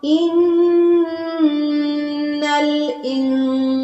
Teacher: نون شدت پہ غنہ کیا ہے اور نون ساکن پہ اخفا کیا ہے